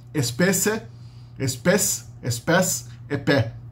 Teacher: E daí o S se perdeu, mas o E protético continua existindo